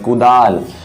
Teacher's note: जैसे कि मान लीजिए मैं यहाँ पर अगर लिख देता हूँ कुदाल, तो यहाँ पर देख सकते हैं ये जो दा जो है, दा और आ का आकार है यहाँ पर, इसमें हम लोग दाल थोड़ा खींच के बोलते हैं, यानी कि थोड़ा बल देते हैं, कुदाल। उसी तरीके से घर, रा पर थोड़ा हम लोग बल देते हैं।